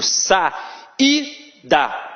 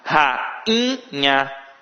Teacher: o I não teve som de I. Ele ficou nasalizado